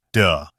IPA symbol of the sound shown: ð